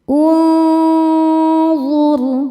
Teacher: Suara yang masuk hidung dan yang keluar dari mulut sama besar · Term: ikhfa hakiki